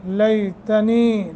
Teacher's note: کریں گے، لیتنی لئی حرف لین یا ساکن ما قبل فتح، تنی نی حروف مدہ یا ساکن ما قبل کسرہ ہے، ایک الف کے برابر لمبا کریں گے